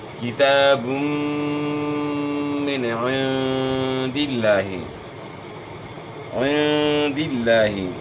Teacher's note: لفظ اللہ کے لام کے اوپر کھڑا زبر ہے، اس کو آپ نے ایک الف کے مقدار کے برابر کھینچنا ہے